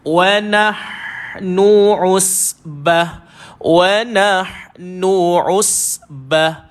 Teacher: dan ha pedas, dia duduk dekat tengah kerongkong.